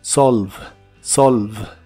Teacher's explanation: La V es labial y vibrante y la E del final es muda.